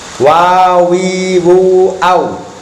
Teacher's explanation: Wawu makhrajnya adalah di antara dua bibir. Bibir renggang.